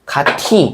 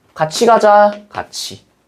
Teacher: 디귿과 티읕이 이와 합쳐지면 지읒이나 치읒으로 발음합니다.